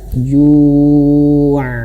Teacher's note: huruf ain itu dia mengalir sedikit. Makanya ketika ju' itu jangan sampai seperti hamzah. Bukan, harus mengalir.